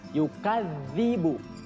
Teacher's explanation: Di situ ada zal bertasydid. Jadi zalnya harus ditahan dulu